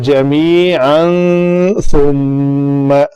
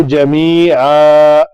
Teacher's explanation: 2 زبر والی تنوین پر رکنے کا طریقہ ہے کہ اس کو الف مدہ بنا کر پڑھا جاتا ہے. بہت زیادہ لمبا کرنا جو ہے وہ غلط ہے.